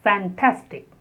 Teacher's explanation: And the stress is on the second syllable.